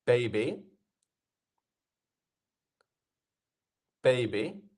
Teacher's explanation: on baby we have our first syllable which is the stressed one